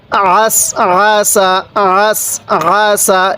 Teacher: আইনটা উচ্চারণের সময় গলার মধ্যে একটু চাপ দিলে আইনটা সহি উচ্চারণ হয়।